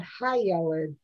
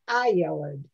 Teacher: in modern hebrew when they're speaking they seem to lose the hay so it's not high yellowed it's eye yellowed everything is an